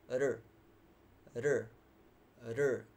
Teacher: The tongue curves backward, but on the way it kind of hits the alveolar, that space above your upper teeth, and that's why you hear this r, r, r. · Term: curled tongue